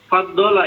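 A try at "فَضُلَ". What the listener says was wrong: Ya, fadulan nabiyyin, melebihi ya, fadula. Kalau faddala melebihkan, bukan. Faddala berarti, nggak pakai tasdid. Fadula.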